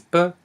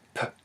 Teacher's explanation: in initial position, this symbol is pronounced as b, and at the end in the final position, this sound is produced as p.